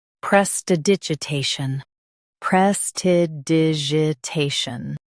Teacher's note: Te, shun, prestidigitation. Stress te and keep shun soft.